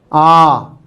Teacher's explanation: जब हम इसको बोलेंगे इसका उच्चारण करेंगे तो हमारा मुख्य द्वार पूरा खुलता है